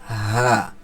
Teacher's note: এটা হবে কন্ঠনাল শুরু থেকে উচ্চারণ হবে এক সেকেন্ড টেনে হা আর হামজা এটাও কিন্তু এক সেকেন্ড টেনে উচ্চারণ হবে এটাও